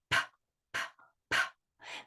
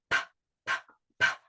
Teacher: p really sounds more like a puff of air